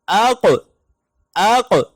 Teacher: یہ موٹا قاف جزم کی صورت میں قلقلہ کی آواز دیتا ہے، جیسے اق اق، ہم نے 5 حروف قلقلہ پڑھے تھے، قاف قا با جیم دال، اس میں سے جو قاف ہے یہ سب سے آخری حرف ہے۔